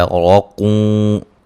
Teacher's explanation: را کو موٹا ادا کریں گے، نون تنوین کا ادغام مع الغنہ ہے